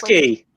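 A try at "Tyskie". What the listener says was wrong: I think it's Tushki. Tiskia. I think they pronounce the two vowels at the end as two vowels.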